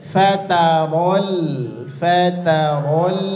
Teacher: Jadi ro-nya tebal, lam sukunnya juga tipis lagi ya.